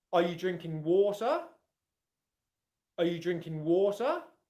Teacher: You'd probably use an upwards intonation pattern.